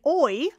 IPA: ɔɪy